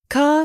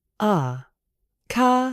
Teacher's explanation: British English is nonrotic. We replace the R with a soft uh sound known as thewa.